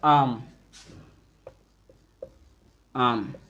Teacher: जब आप लोग इसका उच्चारण करेंगे देखेंगे जो मुख द्वार है व लगभग पूरा खुल जाता है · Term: विवृत स्वर